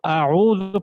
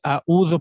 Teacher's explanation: تو دیکھنا یہ ہے کہ اب عین کیا ہے, کون سا حرف ہے, اس کا مخرج کیا ہے, سب سے پہلے ہم نے یہ دیکھنا ہے. تو عین کا جو مخرج ہے وہ وسط حلق ہے, تو ہم نے وہاں سے حرف کو ادا کرنا ہے, نہ کہ ہم نے حمزہ کی طرح پڑھنا ہے, ٹھیک ہے.